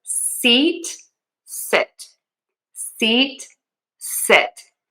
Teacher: So if you mess up the SH and the S and the E and the I, then you need to do E long and tense for sheet versus sit. My mouth is more relaxed for that short I sound